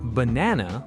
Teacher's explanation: with the stress on na, that's how a native speaker's brain expects to hear it. If you say banana or banana, it still might be understandable, but it sounds off, slightly strange.